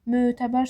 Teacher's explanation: Əmtə sözündə ən-in biri düşür, biri uzanır. Mötəbər sözündə də ö uzanır.